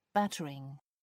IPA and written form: ˈbætərɪŋ (battering)